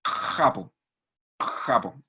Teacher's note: hay fricción a nivel de faringe